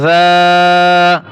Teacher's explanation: জাল আলিফ জবর জা, এক আলিফ টান দিয়ে পড়বেন